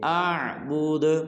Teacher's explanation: آخر میں دال کو قلقلہ کریں گے، أعبد · وَلَا أَنتُمْ عَابِدُونَ ما کو لمبا کریں گے، مد ہے، ما أعبد، آخر میں دال کو قلقلہ کریں گے